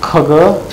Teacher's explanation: These are velar. Kh and g. This is produced in the end of the mouth. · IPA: k g